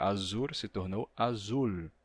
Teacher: E a partir de azur, que a gente encontra lá no galego medieval, na poesia, o R final, né, de azur, ele termina passando por um fenômeno que a gente chama de lambdacismo, e ele se torna um L